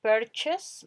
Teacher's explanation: esa UR suena como E, hacen como una E muy cerrada, como con boca de O